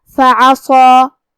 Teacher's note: ہم صاد کو اور مد الف کو دونوں کو بھاری آواز میں پڑھیں گے